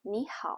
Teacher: it in isolation or at the end of a sentence but in everyday conversation many people just pronounce it as a low tone even when it appears at the end of a sentence so